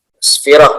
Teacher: Nah, di sini ada tamar butoh. Nah, jadi kalau tamar butohnya diwaqafkan, maka dibaca ha ya